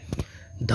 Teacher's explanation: ध जो व्यंजन है सघोष भी है, महाप्राण भी है और दंत्य भी है।